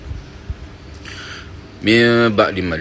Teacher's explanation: Maksud ikhfa ini adalah kita mesti sembunyikan bunyi mim. Tidak jelas bunyi mim.